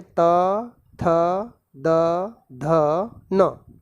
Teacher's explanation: तू का मतलब होता है त वर्ग, त वर्ग में त, थ, द, ध, न, और ल साथ में और श। ये सभी जो वर्ण हैं इनका उच्चारण स्थान दंत होता है